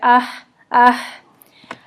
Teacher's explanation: उसके बाद आपका है हा भी हमारा ये लाइट होता है, जितना इसमें ना ज़्यादातर हम्स होता है, यानी कि इसमें हवा की आवाज़ ज़्यादा होती है, सांस की आवाज़ ज़्यादा होती है